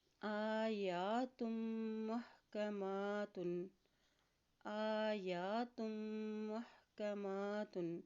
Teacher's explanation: یہاں پر غنہ بھی ادا کرتے ہوئے پڑھیں گے، اور میم کے اوپر دیکھیں کھڑی زبر ہے تو اس کو بھی ایک حرکت لمبا ادا کریں گے